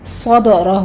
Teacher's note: صدرہ میں بھی صاد بھی پر ہے، را بھی پر ہے، دال پر قلقلہ کریں گے۔ ہو میں مد صلہ صغرا ہے، 2 کاؤنٹ کریں گے۔